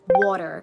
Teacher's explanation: did your tongue tap that T like it almost came out like a D